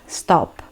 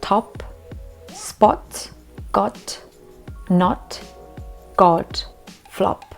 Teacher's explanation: pronounce the O kind of short but very full on, like a big O. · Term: quite a short O